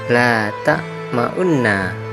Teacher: Isyamam yaitu memoncongkan mulut tanpa suara setelah mematikan huruf, seolah-olah memberi isyarat adanya domah u. Dalam tulisan Arab dibaca la ta'ma'unna.